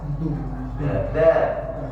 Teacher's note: Huruf dal makhrajnya ujung lidah bertemu pangkal gigi seri atas.